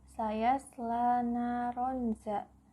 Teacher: Naronza itu artinya ikhfa hakiki. Karena ada tanwin bertemu dengan huruf zal, cara membacanya samar-samar membentuk huruf zal.